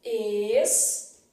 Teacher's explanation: E a letra M, na palavra estavam, tem som de U, ou seja, ela emite aqui um som de semivogal.